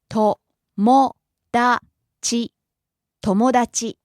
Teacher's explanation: starts low rises on mo the second syllable and stays high